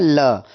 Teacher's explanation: दोनों ओर से हवा निकलती है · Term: पार्श्विक ध्वनि